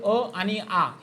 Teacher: आता या कंठामध्ये कोणते स्वर येतात कंठामध्ये अ आणि आ हे स्वर